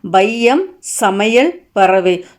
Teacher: சொற்களின் முதல், இடை, இறுதி ஆகிய இடங்களில் வந்து வரும்போது தனக்குரிய மாத்திரை 2 மாத்திரையிலிருந்து குறைந்து ஒலிக்குது. இவ்வாறு குறைந்து ஒலிக்கும் ஐகாரம் ஐகார குறுக்கம் அப்படிங்க.